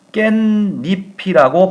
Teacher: 함께 발음을 하면 우리의 최종 발음은 깻잎이라고 발음을 하겠죠. 자, 원래 없던 니은이 덧났어요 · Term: 니은 첨가